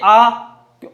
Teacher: तो हमारे पास जो आ स्वर है वो कौन सा है, विवर्त स्वर, अर्थात सबसे ज्यादा मुख खुलता है आ स्वर के उच्चारण में, इसलिए इसको कौन सा स्वर कहा जाता है, विवर्त स्वर कहा जाता है।